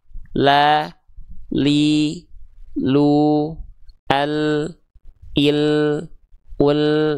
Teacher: Jadi yang nempel itu tepi lidah bagian depan kiri dan kanan. Dia nempel menyusur sampai ke ujung lidah ke langit-langit depan. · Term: huruf lam